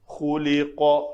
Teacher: خا بھی پر، قاف بھی پر، بیچ میں لام پتلا ہے، تو خُلِقَ مِن مَّاءٍ دَافِقٍ، تو یہ قاف کے اوپر قلقلہ کریں گے۔